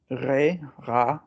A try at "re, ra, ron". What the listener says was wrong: R, it's not double R, it's re. Top of the mouth. Re, yeah.